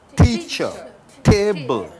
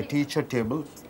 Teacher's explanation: When T at the beginning of the word, you are spitting it out.